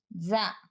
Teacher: జ నాదం అల్ప ప్రాణం దంత్యం స్పర్శోష్మం